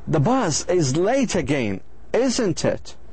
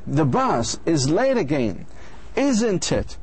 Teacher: One person begins with a tag question with a voice going down at the end.